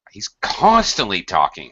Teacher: colloquial speaking I'm really emphasizing the adverb